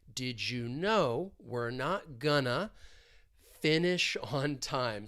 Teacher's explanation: Going to is often reduced to gonna.